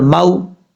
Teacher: मीम के बाद जो वाव है ये वाव लीन है, मद्दा नहीं है, और लाम के बाद जो वाव है ये वाव मद्दा है, यानी इसको लंबा करेंगे एक अलिफ की मिकदार।